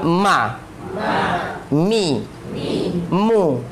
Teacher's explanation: Filosofinya adalah menjauhkan huruf dari makhrajnya. Mim aslinya di dua bibir, gara-gara harokat fathah buka, kasrah nurun, dhammah maju, dia keluar dari makhraj aslinya.